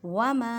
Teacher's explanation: میم کو ایک الف کی مقدار میں کھینچ کر پڑھیں کیونکہ الف سے پہلے زبر ہے۔